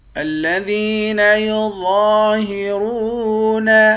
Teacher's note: را کو موٹا پڑھیں گے، واو کے ساتھ ملا کر ایک الف کے مقدار کھینچیں گے، واو حروف مدہ ہے۔